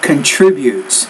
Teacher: So stress is actually on that second syllable, not the third.